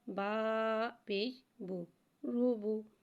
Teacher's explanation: با کو ایک الف یعنی 2 حرکات کے برابر کھینچ کے پڑھیں گے۔